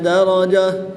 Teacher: گول تا کو وقف کی حالت میں ہاں ساکن سے تبدیل کر کے پڑھیں گے۔